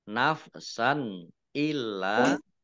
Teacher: fathah tanwin bertemu dengan huruf alif izhar dibaca jelas lamnya dibaca dobel ada tasdidnya illa lam KH Alif mad thii